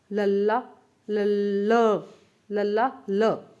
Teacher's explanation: ਭਾਵ ਕਿ ਜਦੋਂ ਆਪਾਂ ਤੁਸੀਂ ਬੋਲ ਕੇ ਦੇਖੋ ਲੱਲਾ, ਤੁਹਾਡੀ ਜਿਹੜੀ ਜੀਭ ਆ ਉਹ ਤਾਂ ਤੁਹਾਡੇ ਦੰਦਾਂ ਦਾ ਜਿਹੜਾ ਪਠਾਰ ਹੈ, ਦੰਦ ਪਠਾਰਾ, ਦੰਦਾਂ ਦੇ ਬੁੱਟ ਨੇ, ਉਹਨਾਂ ਨਾਲ ਛੋ ਰਹੀ ਹੈ, ਠੀਕ ਹੈ, ਬਟ ਹਵਾ ਜਿਹੜੀ ਕਿ ਐ ਸਾਈਡ ਦੇ ਵਿੱਚੋਂ ਨਿਕਲ ਜਾਂਦੀ ਹੈ। ਤਾਂ ਉਹ ਕਿਹੜੀ ਹੋ ਜਾਣਗੇ, ਉਹ ਹੋਣਗੇ ਤੁਹਾਡੇ ਜਿਹੜੇ ਕਿ ਆਪਣੇ ਵਿਅੰਜਨ ਨੇ ਉਹ ਪਾਰਸ਼ਵਿਕ।